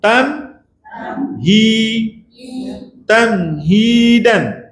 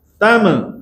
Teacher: Habis suara mi dulu baru sebut hi. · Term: Izhar syafawi